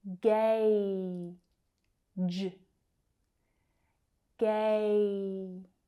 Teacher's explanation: the vowel sound is the diphthong A, like in day.